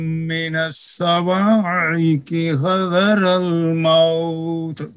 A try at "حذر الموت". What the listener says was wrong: موت تا میں آواز بند ہوگی، موت خلخلہ نہیں ہے. في آذانهم من الصواعق حذر الموت.